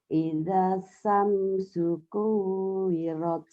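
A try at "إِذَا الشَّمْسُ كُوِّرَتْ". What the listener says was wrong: Shin. Ida syamsu kuwirat. Ida syamsu kuwirat. Shin. Jadi dari ida matobi, tapi matobi gak jadi panjang karena ketemu tasdid, ketemu alif lam.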